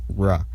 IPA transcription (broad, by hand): ɹ